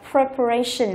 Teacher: Đuôi tion cho nên trọng âm chính của từ sẽ rơi vào cái ray này. Chúng ta đọc là preparation, là sự chuẩn bị.